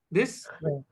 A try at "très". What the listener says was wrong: So it is not kre, it is khe. Khe. It is not, we are not using ka, we're using kha. Khe. Khe. So always make this change in the sound in your mind and then pronounce it.